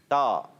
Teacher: زبان کی نوک اور دونوں دانتوں کے جڑ سے